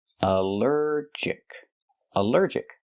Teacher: Allergic is three syllables. Allergic. The stress is on the second syllable.